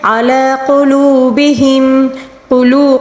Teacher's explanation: قلو میں واو مدہ ہے، اس کو 1 الف کے برابر کھینچ کر پڑھیں گے